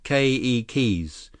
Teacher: Keikis, with the accent on the first syllable.